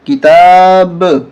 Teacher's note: زبر با وانتم تتلون الکتاب یہاں قلقلہ کریں گے کیسے کتاب با کی آواز 2 دفعہ آنی چاہیے